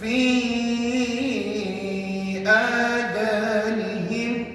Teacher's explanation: Nampaknya ada pelajar yang terlajar ataupun terkurang harakat pada fi. Fi tu puan-puan kena buat paling kurang 4. Jangan buat 2 sebab hukumnya mad jaiz munfasil.